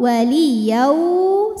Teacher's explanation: cukup kita tinggikan intonasinya berikutnya ada hukum Idam bunah karena ada tanwin fathah menghadapi huruf wau maka tanwinnya masukkan ke wau